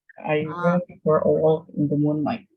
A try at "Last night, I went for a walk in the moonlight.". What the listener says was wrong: The L is silent. A walk, bacanya walk.